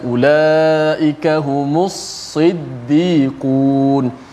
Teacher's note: Supaya kita menyebut huruf itu jelas hurufnya. Huruf sad dijelaskan huruf sad dengan sifat tebalnya, tidak tertukar dengan huruf sin.